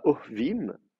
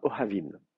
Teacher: Il y a une légère coloration A qui est notée par les massorettes.